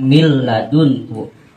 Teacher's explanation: Ketika nun mati atau tanwin bertemu dengan salah satu huruf yang 2 tadi, contoh bertemu dengan lam, maka bunyi nun dan tanwinnya tidak disertai dengan gunnah. Min ladunhu, min ladunhu dibaca mil ladunhu. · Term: idgham bila gunnah